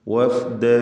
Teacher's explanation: വാവ് രണ്ട് ചുണ്ടുകളിൽ നിന്ന് തന്നെ വരണം. ഫ താഴെ ചുണ്ടും മേലെ മുൻപല്ലിൻ്റെ അറ്റവുമാണ്. വഫ്ദ, എല്ലാ അക്ഷരങ്ങളും റാ ഖാഫ് ഒഴികെ തഫ്ഖീം ഇല്ലാത്ത അഥവാ തർക്കീഖ് ചെയ്ത് ഉച്ചരിക്കേണ്ട ഇസ്തിഫാലിൻ്റെ അക്ഷരങ്ങളാണ്.